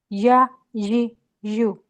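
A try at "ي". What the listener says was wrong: या लंबा कर रही हैं आप, छोटा रखें, य यी यू,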